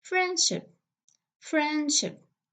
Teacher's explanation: We have ne, de, she. So we have three consonants cluster. So usually the middle sound, which is de, will be elided.